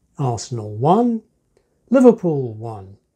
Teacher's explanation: But when it's a draw, the repetition is deaccented.